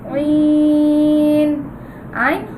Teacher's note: আইন হলকের মাঝখান থেকে উচ্চারিত হয়